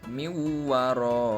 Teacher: Huruf nunnya itu dileburkan ke dalam huruf wawu, sehingga pembacaannya, pelafalannya menjadi miwaroihim. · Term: idgham bigunah